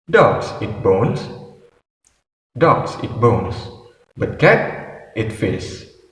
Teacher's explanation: So for the word dogs is using rising intonation, and the word bones is using falling intonation. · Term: rising falling intonation